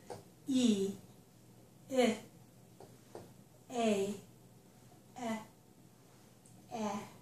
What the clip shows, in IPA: i ɪ eɪ ɛ æ